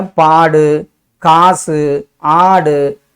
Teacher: உகரங்கள் தனக்குரிய ஒரு மாத்திரையிலிருந்து அரை மாத்திரையாக குறைந்து ஒலிக்கும். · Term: நெடில் தொடர் குற்றியல் உகரம்